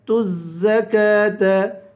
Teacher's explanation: الزَّكَاةَ، تا کو زا سے ملا کر زا کو سختی کے ساتھ پڑھیں گے، زا پہ کھڑا زبر ہے، اسے ایک الف کے برابر کھینچیں گے